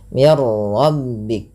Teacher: nunnya hilang secara utuh karena langsung ke huruf ro dan ro dibaca dengan tebal · jangan banyak sekali takrir pada huruf ra, tapi sekali saja mir rabbik. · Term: idgham Kamil